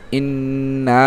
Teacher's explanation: আলিফ নুন জের ইন আলিফ নুন জের ইন নুন আলিফ জবর না ইন্না এক আলিফ টান হবে। যেহেতু জবরের বাম পাশে খালি আলিফ মদের হরফ এক আলিফ টান হবে